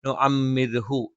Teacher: പിന്നെ ഇവിടെ നുഅമ്മിർഹു, റാഇന് കെസർ അല്ലെങ്കിൽ കൂടി റാഇന് സുക്കൂനും തൊട്ട് മുമ്പുള്ളത് കെസർ ആണെങ്കിലും നമ്മൾ ഇതേ നിയമം തന്നെയാണ് പാലിക്കുന്നത്. നുഅമ്മിർഹു എന്ന് പറയരുത്, കനപ്പിച്ച് പറയരുത്. നുഅമ്മിർഹു നേർപ്പിച്ച് പറയുക.